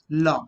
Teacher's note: So liquids here, one lateral liquid. La, air escapes laterally.